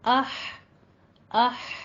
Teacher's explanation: वस्ते हलक में, हलक के दरमियान में हमारा जा रहा है साउंड